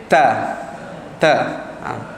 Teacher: Tekankan sedikit kerana sifatnya syiddah dan hamas kata. Berangin. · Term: huruf ta